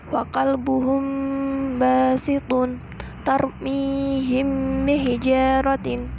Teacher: maka cara membacanya harus dengan cara samar-samar di bibir dan dibaca dengan didengungkan